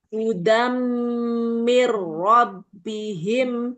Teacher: Tanwinnya tidak rata ya. Ketemu mim bertasdid maka dia dengung.